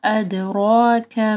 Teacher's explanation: را موٹی پڑ جائے گی، را کے اوپر زبر ہے